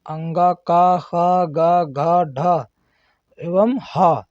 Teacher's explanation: जिनको हम कंठ के माध्यम से जिनकी ध्वनि निकलती उन्हें कंठ वर्ण कहते हैं